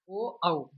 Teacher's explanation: ओ औ यह कंठ और ओष्ठ वर्ण कहलाते हैं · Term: कंठ ओष्ठ